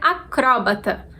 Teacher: com acento a gente é obrigado a tornar o CRO a sílaba tônica então a gente falaria acrobata do jeito como apareceu na tela